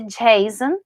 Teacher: Eu não falo Jason, poderia, mas nesse caso vai ser Jason, o stressed sound é no A, então aqui é a sílaba tônica